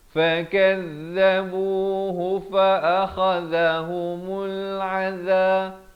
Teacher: Ini semua satu harakat kecuali bu.